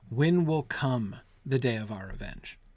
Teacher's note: one of the consequences i think is that the emphasis falls on the verb